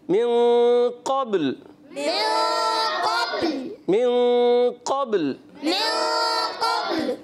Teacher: قب قلقلہ ہوا قب، اب لام ساکن رکھنا ہے